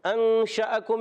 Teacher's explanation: شین میں تفشی ہوتی ہے، منہ میں آواز پھیلتی ہے، اور شین پر زبر ہے، اس کے بعد الف ہے.